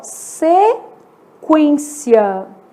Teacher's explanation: exemplo aqui ó se quência escrever a palavra mesmo né sequência nesse caso o u é lido né e ele é lido com som de trema Então nesse caso ele tem um som de semivogal Lembrando que o trema deixou desistir com a